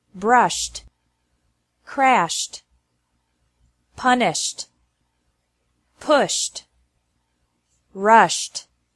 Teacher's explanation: ED is pronounced like T after verbs ending with an SH sound.